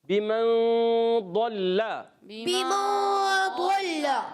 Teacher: غنہ کریں گے ایک الف کا مگر نون کو چھپا کر · اور لام مشدد ذرا رک کر ادا کریں گے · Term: اخفاء